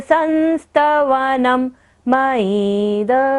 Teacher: संस्तवनम में बिंदु है न के ऊपर, तो हमें यहाँ पर उच्चारण क्या करना है? म।